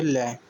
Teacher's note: जीभ श्वास वायु के मार्ग में खड़ी हो जाती है और श्वास वायु बगल से प्रवाह हो जाती है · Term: पार्श्विक व्यंजन